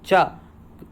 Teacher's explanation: अब क च, का वर्ग का कंठ है, चा का तालव्य या तालु होता है, तो चा व्यंजन वर्ण का उच्चारण स्थल क्या बन जाएगा, तालव्य या तालु बन जाता है